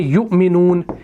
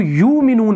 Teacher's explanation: बाज़ क़िराअतों में युमिनून को यूमिनून पढ़ा जाता है, यानी वहाँ पर इस हमज़ा को नहीं पढ़ा जाता, उस वाव को पढ़ा जाता है, उस कुर्सी को पढ़ा जाता है।